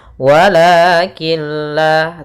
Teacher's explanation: membacanya masukkan huruf nunnya atau tanwinnya ke huruf lam sehingga Nun suara nunnya hilang dan tinggallah suara lamnya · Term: idgham bilagunah, idgham bila gunnah